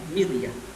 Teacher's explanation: kasroh yang asli itulah yang kemudian membuat roh yang sukun dibaca tarqiq